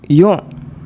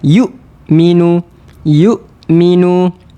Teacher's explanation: pastikan ada satu sifat yang dinamakan sebagai syiddah. Suara tertahan.